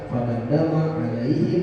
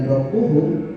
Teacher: Fadam dama dan alaihim dibaca idhar, dibaca jelas mimnya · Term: idhar syafawi